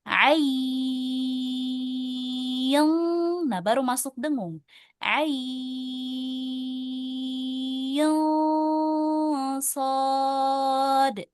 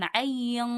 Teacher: ai, i-nya dulu, ya-nya dulu dibaca 6 harokat, baru didengungkan.